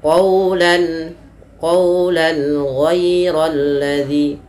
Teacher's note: Maka huruf-huruf yang datang setelah huruf yang dia huruf yang berharakat tanwin dan huruf tersebut dikeluarkan daripada tenggorokan kita yang 6, ada yang paling bawah hamzah ha, ain ha, ghain kha, maka dia harus jelas suara tanwinnya atau suara nun yang dimatikannya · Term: izhar halqi